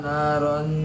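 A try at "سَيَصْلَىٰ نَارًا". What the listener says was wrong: Nah-nya panjang. ronnya jadi ikhfa rong.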